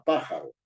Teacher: si digo la palabra pájaro No es cierto la fuerza de la voz está en la antepenúltima sílaba